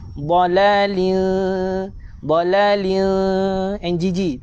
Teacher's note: Tebalkan dia. Fi dala lin tanwin berjumpa dengan huruf kaf. Ikhfa hakiki dengung NGG.